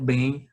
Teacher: O também seria o bem, a sílaba tônica dela, caracterizando-a como uma oxítona. De acordo com a regra da oxítona, toda palavra oxítona que termina com M, ela é acentuada, tá?